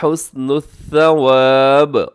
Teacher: حسن الثواب وقف کریں گے تو یہاں پہ با کو کر دیں گے قلقلہ